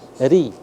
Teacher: Ketika dia berharakat kasrah dibaca tipis.